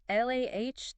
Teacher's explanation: Get that clear a sound. Not a as in cat.